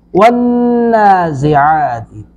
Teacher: نون پر شد ہے، ون نون پر غنہ کریں گے ، نازعات زا کو سختی سے ادا کریں گے، عین کو